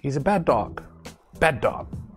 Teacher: we don't pronounce two d's only one d sound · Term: twin sounds